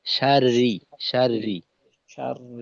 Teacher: শার রি পাতলা করে, যেন রই না হয় রি